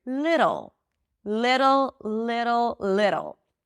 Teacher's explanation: You bring the tongue up and it slightly touches the upper pallet. It sounds like a D. But then, just as you do with the R, you pull it in for the R sound. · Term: flap T